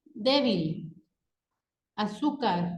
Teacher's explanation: Nuestro siguiente tipo de palabras son las palabras graves. En estas palabras, su sílaba tónica recae en la penúltima sílaba